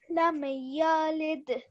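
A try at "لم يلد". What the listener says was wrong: Again, what you're doing is on the meme. Is meme a calcula letter? No, it's not. Again, you're giving a slight jerk, and that's fine.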